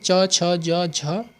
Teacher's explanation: ये जो ध्वनियाँ है ना, ये जो व्यंजन है ये तालु से बोले जाते हैं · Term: तालव्य